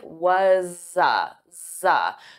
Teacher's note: So notice I'm linking the sounds and I'm taking that was, but it's a z, z, it's a voiced sound. So I'm going to transfer that sound to ah.